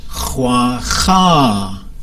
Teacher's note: going to be long and high so for example ha ha that's a high tone at the end